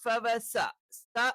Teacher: സ എന്ന് പറയുമ്പോൾ നാവിന്റെ മധ്യഭാഗം താഴ്ന്നു നിൽക്കണം.